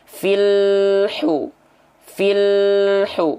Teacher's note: sifat syidah tertahan ya maka ketika kita lafazkan ke dalam ayat pastikan bunyi lam sukunnya terus mengalir sedikit ya filu filhu bukan fil hu Nah jadi tidak boleh ada jeda · pastikan bunyi lam sukunnya terus mengalir sedikit, ya. Filhu.